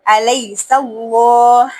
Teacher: اللہ کے لام کو پر پڑھیں گے